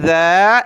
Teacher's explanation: وہ جو دوسرا حرف ہوتا ہے زا، جس میں دانت ملاتے ہیں، سختی کے ساتھ پڑھتے ہیں، وہ الگ ہے، یہ الگ ہے۔ یہاں سختی نہیں کریں گے بلکہ زبان نکال کر نرمی کے ساتھ اس کو ادا کرنا ہے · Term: ذال